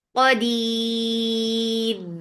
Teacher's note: Because of waqf, we are giving temporary sukoon on ra. This temporary sukoon has changed this 2 counts long vowel into 4 counts. That is called mad arid sukoon. · And keep ra light because there is ya before it.